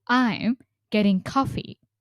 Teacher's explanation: The sentence stress is on I'm and coffee and there is a falling intonation finishing tone on coffee.